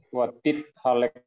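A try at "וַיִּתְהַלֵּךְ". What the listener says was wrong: Wajid halek. Iya, wajid halek. Jadi Hanok itu ya ini kayak tadi ya, wajid halek ya, wajid halek. Kenapa J? Karena dia kan orang ketiga tuh. Wajid halek.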